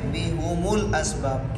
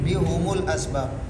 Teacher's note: تو میم کو ضمہ دیتے ہیں، تو میم کے ضمہ کے ساتھ ہا کو بھی ضمہ دیتے ہیں ملانے کی صورت میں